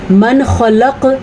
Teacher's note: من خلق، نون ساکن یا تنوین کے بعد حروف ہلکی میں سے کوئی حرف آ جائے، حمزہ ہا، عین حا، غین خا، یہ حروف ہلکی ہیں۔ یہاں پہ نون ساکن کے بعد خا آیا ہوا ہے تو یہاں پہ نون اظہار کا قاعدہ ہوگا، یعنی کہ نون کو ظاہر کر کے پڑھیں گے۔ کسی قسم کا کوئی غنہ، کوئی اخفا، کوئی بھی قاعدہ یہاں پہ اس طرح کا لاگو نہ ہوگا جس میں ہم نون کی حالت کو چینج کر سکیں۔